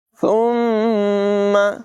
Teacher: ثم سا میں بغیر سیٹی کے ادائیگی کریں گے · میم مشدد ہے، اسے غنہ کر کے پڑھیں گے